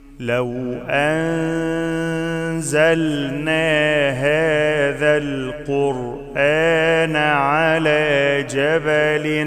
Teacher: النون ما عليهاش حاجة، فيها إخفاء مع الغنة، يعني لازم أديها غنة حركتين